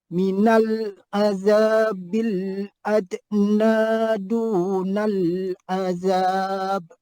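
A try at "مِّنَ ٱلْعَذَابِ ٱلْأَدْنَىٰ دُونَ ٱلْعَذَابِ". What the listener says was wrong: Kalau boleh du tu jangan naik naik je. Du b sikit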